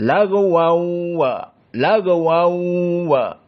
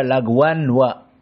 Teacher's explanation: Maka lagwan tanwin masuk kepada waw wala. Di sini idgham sepakat.